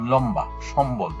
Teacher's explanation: ময়ের সঙ্গে বফলা যুক্ত হলে সেই ব উচ্চারিত হয়। যেমন লম্বা, সম্বল, এখানে ময়ের সাথে ব যুক্ত হয়েছে, এই বটা কিন্তু উচ্চারণ হয়েছে।